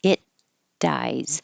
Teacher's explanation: It dies because your tongue is in the T position, the same as the D position. So you just hold it.